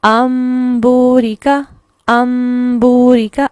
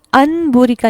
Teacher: اب یہاں پر انبوریکا نہیں پڑھا جاتا، نون کی ساؤنڈ میم میں بدل جاتی ہے